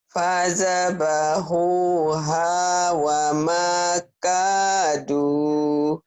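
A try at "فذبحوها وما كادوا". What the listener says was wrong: Fadzabahuha wa makadu. Jangan wa makaduh ya. Kedengarannya kayak ada hak kecil. Wa makadu. Coba lagi. Jangan ada hanya.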